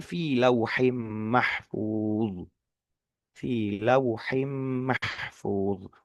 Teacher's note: kalau ha itu cenderung lebih dalam, lebih ke tengah tenggorokannya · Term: huruf ha